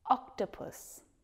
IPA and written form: ˈɒktəpəs (octopus)